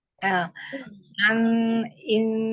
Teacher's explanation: jangan dipanjangkan alifnya langsung ya tapi yang mengalir cuma Nun sukunnya aja